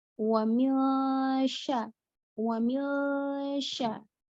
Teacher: Jadi nunnya nggak diperjelas tapi disamarkan ke huruf setelahnya yaitu huruf shin gitu ya. Jadi tadi ulang lagi ikhfa itu samar, nun sukun atau tanwin bertemu dengan huruf ikhfa maka bacaan makhrajnya itu samar.